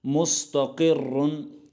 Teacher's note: इस पर 2 पेश है, तो ये रा जो है ये भी पुर पढ़ा जाएगा। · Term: रा मुशद्दद